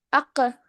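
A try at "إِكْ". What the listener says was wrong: அக்கு அல்ல, இக்கு. இதோ அந்த இக்கு என்று கலக்கும். அது முக்கியம். இது ஐந்தும் தான் கலக்கி ஓதப்பட வேண்டிய எழுத்துக்கள், கலக்கலுக்குரிய எழுத்துக்கள் நான் சொல்லுவேன்.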